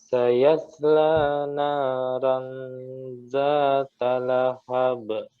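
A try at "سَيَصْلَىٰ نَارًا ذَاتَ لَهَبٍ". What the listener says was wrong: Nah, ro-nya jelaskan tadi condong ke ra. Naran, bukan ran, tapi ron. Naron zata lahab.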